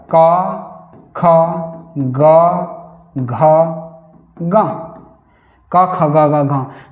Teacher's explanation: अ और आ क वर्ग क ख ग ह और विसर्ग का उच्चारण स्थान कंठ है